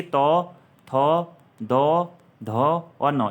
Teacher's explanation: दंत यानी कि त, थ, द, ध और न, इनका उच्चारण कहाँ से होता है? तो दंत से होता है।